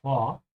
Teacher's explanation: It's a separable verb, so make sure you emphasize the beginning, vor, and pronounce the V like an F, yeah? And the O also has a slight W sound at the end, you notice because of the R, so vor, yeah?